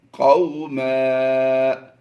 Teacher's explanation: 2 زبر کی تنوین کو وقف میں ہم نے الف مدہ سے بدلا ہے۔